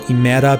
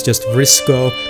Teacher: demoticizing variants of Greek drop unstressed initial vowels